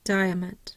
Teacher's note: Now di has the primary stress. We have the schwa over the A and a schwa over the O. We're not going to hear those very much.